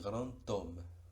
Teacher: Una D a final de palabra es muda en realidad, pero con la liaison adquiere sonido y es el de T.